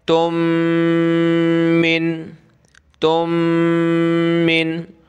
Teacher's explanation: 2 میم ایک جگہ آ جائیں تو ان دونوں کو پلس کر کے ایک میم پڑھتے ہیں، اور میم کے اوپر یہ تشدید ہے تو یہاں کیا کریں گے، ناک میں آواز پیدا کریں گے، ایک میم پڑھیں گے، تم من، تم من خیر، خیر، ٹھیک ہے۔